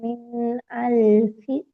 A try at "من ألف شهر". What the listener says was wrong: மின் அல்ஃபி ஷஹுர். பெரியஹா வரணும். ஷ வரணும்.